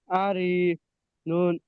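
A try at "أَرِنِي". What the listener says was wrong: রটা টান হয়ে যাচ্ছে, র টান হবে না। রটা হলো হারাকাত, হারাকাত টান হয় না।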